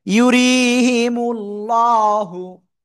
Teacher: আল্লাহ শব্দের লামে এই যে এর ডান দিকে এই যে পেশ রয়েছে, তো কি করব? মোটা আওয়াজে পড়বো।